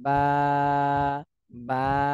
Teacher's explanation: এক সেকেন্ড বা দেড় সেকেন্ড টান দিতে হবে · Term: এক আলিফ টান